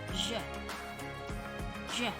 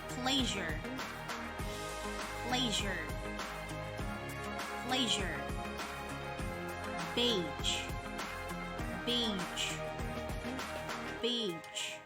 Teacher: voice fricative made by putting the tongue a little bit past the alveolar ridge